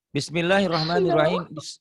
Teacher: Bismillah, lafaz Allahnya dibaca. Tipis. Kenapa dibaca tipis? Karena sebelumnya berbaris kasroh. Berbaris di bawah kasrah.